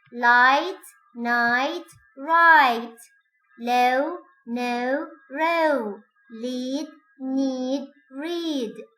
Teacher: concentrate on the very firm contact for la and na and smooth glide like for ra